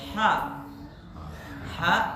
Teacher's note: fa fa fa fa fa fa kemudian ha ha dari kerong dari kerongkongan ya bukan dari dada